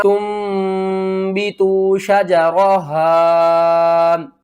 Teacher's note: اقلاب کریں گے، نون کو میم میں بدل کر پڑھیں گے